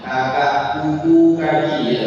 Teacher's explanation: Persentuhan antara pangkal lidah dengan langit-langit yang keras dan lunak sekaligus.